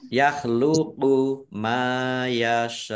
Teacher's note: Tetapi karena bertemu dengan huruf hamzah dalam satu kata, maka menjadi mat wajib mutasil. Mat wajib mutasil dibaca panjang harus lima harokat. Tetapi karena ini wakof, maka bisa menjadi mat arid lisukun.